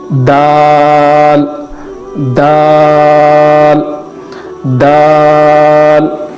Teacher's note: زبان کے باہری والے حصے کو اوپر کے دونوں دانتوں کو لگانے سے تا ادا ہوتا ہے، ویسے ہی دال کا تلفظ بھی ہے